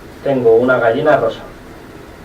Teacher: Then the second contour that we found was a contour with two intonational phrases. So you first have a rising accent, then you have a high boundary tone, a downstep high accent, and then a low boundary tone.